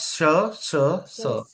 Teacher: श स इनमें कंपन नहीं हो रहा है या कम हो रहा है ये है तुम्हारे अघोष